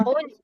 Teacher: خو موٹا ہے، لام باریک ہے، خولا نہیں ہے